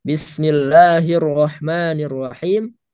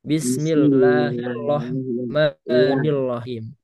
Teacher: kalau huruf ro takrirnya dihilangkan maka dia jadi lam